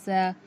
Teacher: जुबान की नोक को नीचे के दो दांतों की जड़ से लगाने से सीन अदा होता है